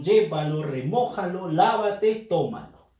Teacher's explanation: Fuerza de voz, antepenúltima sílaba. Y todas se tildan sin excepción. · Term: esdrújula